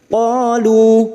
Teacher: Pada saat dibaca wakaf kita panjangkan 2 harokat dulu. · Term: mat jaiz munfasil